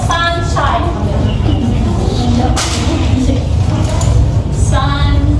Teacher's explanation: both syllables are said with the same amount of emphasis or strength. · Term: two stressed syllables